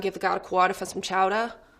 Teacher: Any ER would have an AH at the end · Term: standard Boston accent